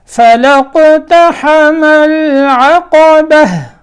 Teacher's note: یہ آخر میں ہا کی آواز آنی چاہیے جب وقف کریں۔ العقبہ ایسے پڑھا تو صرف با کے اوپر زبر ہوگی، آخر میں ہا کی آواز آئے۔ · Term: گول تا